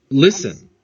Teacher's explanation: Então o verbo listen tem 2 sílabas e o final dele, consoante, vogal, consoante, na segunda sílaba, não é tônico. A sílaba tônica, a forte, é a primeira.